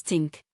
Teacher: Many Nigerian speakers substitute t for th pronouncing think as tink.